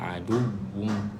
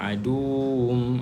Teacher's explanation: Makhraj wau adalah makhraj bibir